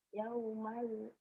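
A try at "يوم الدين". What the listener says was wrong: Yaumaddin. Dalnya keras. Yaumaddin. Yaumaddin. Jangan yaumaldin. Dalnya keras.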